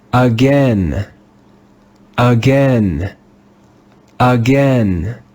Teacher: The digraph AI in this word is not read like AI in rain, but like AI in said, with the sound eh.